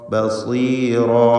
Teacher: ബസീറ സ്വാദിന് കസ്റായതുകൊണ്ട് കുറഞ്ഞ തഫ്ഖീമാണ്.